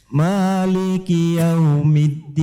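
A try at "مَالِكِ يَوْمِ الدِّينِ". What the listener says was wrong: di sini saya sebutkan yau harus disempurnakan u, tidak boleh mirip o. Yaumiddin.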